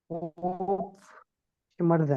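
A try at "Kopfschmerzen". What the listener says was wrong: कोप कोप श्मेर्सन, श्मेर्सन, जेड को इस तरह पढ़ना है यहाँ पे, ठीक है, कोप श्मेर्सन, ठीक है।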